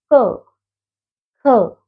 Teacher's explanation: अब उच्चारण स्थान के हिसाब से हम देखेंगे, जो क वर्ग है ये कंठ्य का उच्चारण स्थान है, अर्थात कि जब हम क वर्ग का उच्चारण करते हैं तो हमारी जो आवाज है कंठ से आती है, हवा कंठ से निकलती है।